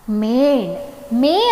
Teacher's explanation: ಮೇನ್ ಅನ್ನೋದು ಎರಡು ಮಾತ್ರಾ ಕಾಲದಲ್ಲಿ ಉಚ್ಚರಿಸಲ್ಪಡುತ್ತೆ ಹಾಗಾಗಿ ಅದು ಈಗಾಗಲೇ ಗುರು ಆಗಿದೆ